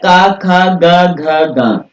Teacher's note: इनका उच्चारण स्थान जो है ये कंठ माना जाता है